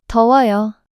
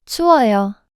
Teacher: 우, and 어, become one pronunciation as a blending vowel